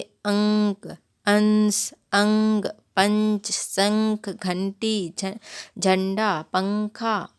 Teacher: इसका उच्चारण करते समय नाक से अधिक वायु निकलती है और मुख से कम। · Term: अनुस्वार